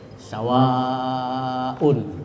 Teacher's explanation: mad wajib muttasil itu artinya panjang. Kemudian wajib dipanjangkan, harus panjang, minimal 4 harakat ya. Bisa sampai 6 ya, 5 atau 6.